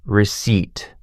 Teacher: People always want to pronounce the p. But the p is silent. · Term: silent P